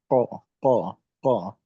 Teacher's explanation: Lidah belakang ketemu dengan langit-langit atas bagian belakang. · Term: huruf kof